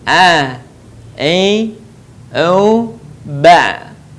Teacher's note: Huruf a keluar dari tengah tenggorokan kita sama dengan cara kita melafalkan huruf ha. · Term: huruf ain